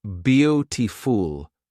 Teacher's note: in beautiful, the stress is on the first syllable, beau